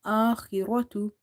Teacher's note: Kha is heavy because it's from the musta'aliya letters, heavy letters. Ra is heavy because of having fatha.